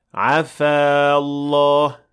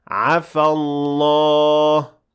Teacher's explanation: The alif at the end of عفا will be dropped if you keep on reading, and you should say عفى الله. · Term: التقاء الساكنين